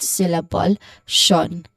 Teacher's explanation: do we have an sh sound on satisfaction? Yes, we do with the last syllable shan.